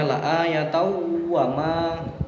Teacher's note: tanwin bertemu dengan wawu. Ini hukum bacaannya idgham bi gunnah disertai dengan berdengung, yang mana idgham bi gunnah adalah apabila ada tanwin atau nun mati bertemu dengan salah satu huruf yanmu atau huruf idgham bi gunnah, maka dinamakan atau dibaca dengan dengung.